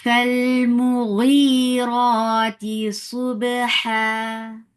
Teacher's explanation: Give hums on fa. Hums is flow of breath. With fatha, the sound is short.